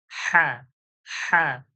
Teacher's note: কণ্ঠনলীর মাঝখান থেকে কি হা, এইটা বড় হা, একে বলে চেপে বার করতে হয় · বড় হা কেন বলি? একটু মুখটা ফাঁকা করে গলার মাঝখান থেকে জোর করে আওয়াজটা নিয়ে আসা হয়